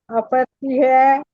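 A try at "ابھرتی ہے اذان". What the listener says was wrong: फिजाओं में उभरती है अजान।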